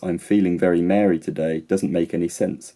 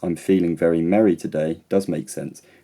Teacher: the only difference between the two is how long i spend saying the vowel er so here the length of the vowel e is phonemic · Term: vowel length